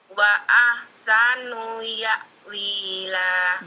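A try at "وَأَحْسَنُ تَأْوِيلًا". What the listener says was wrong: Titiknya di atas. Nu-nya pendekin.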